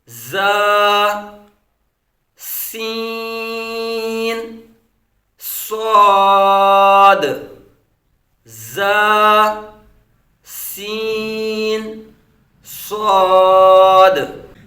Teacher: यह जुबान की नोक और दोनों दांतों के अंदरूनी किनारों से